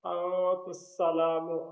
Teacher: یہاں غنہ ہے، سین پہ سیٹی کی آواز ہے